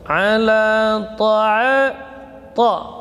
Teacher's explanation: ta huruf syiddah dan jahar, ujung lidah di usul thanaya. Ta ini huruf itbaq, ya, dan huruf yang paling kuat. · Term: huruf ta